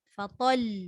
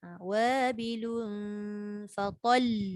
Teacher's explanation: Dia kena matikan lam, lepas mati lam tekan lagi sikit. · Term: syadidah